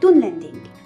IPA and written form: dunlɛnding (dunlending)